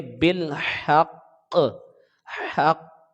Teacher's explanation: تو ہا کو ہم قاف کے ساتھ ملائیں گے تو یہ حروف قلقلہ پر ہم وقف کر رہے ہیں، تشدید ہے تو ہم اس کو 2 مرتبہ پڑھیں گے لیکن ہم نیچے زیر نہیں پڑھیں گے، ٹھیک ہے۔ یہ قاف 2 مرتبہ پڑھیں گے، ایک بار ملاتے وقت اور پھر دوبارہ اس قاف کی آواز آئے گی، تب یہ 2 مرتبہ، صرف حرکت کی آواز نہیں آئے گی۔